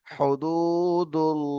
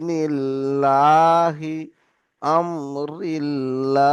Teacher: আল্লাহ শব্দ পড়তে গেলে জবার অথবা পেশ থাকলে তখন মুখ গোল করে পড়তে হবে